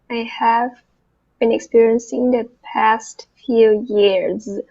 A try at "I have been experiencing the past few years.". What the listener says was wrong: So just remember then that first part with the V, we want that to have that vibration too.